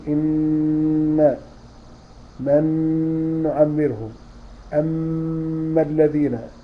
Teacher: الصوت الأغن دوت اللي فيه الغنة بيخرج من الخيشوم